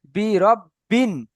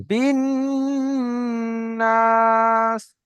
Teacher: রব্বিন মানে গুণনা, মানে বলেছি যে আওয়াজকে নাকের মধ্যে আটকে রাখা, আওয়াজকে নাকের মধ্যে থেমে রাখা, কিছুক্ষণ দাঁড় করিয়ে রাখা